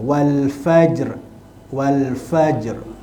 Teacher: huruf ra ra itu dibaca dengan ra tebal